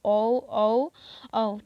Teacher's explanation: होठ जो होता है हमारा वृत्त बन जाता है, यानी कि गोलाकार बन जाता है